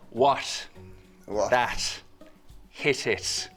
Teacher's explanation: a T sound made with a very soft closure at the tip of the tongue, or not even really quite a full closure at all. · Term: Irish slit T